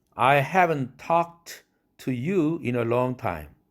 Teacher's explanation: haven't talk 할 때 haven't의 t가 날아가야 되겠죠?